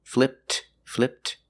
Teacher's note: when that t sound is between consonants you don't really hear it